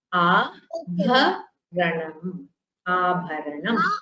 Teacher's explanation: you should pronounce the bhakara with more breath.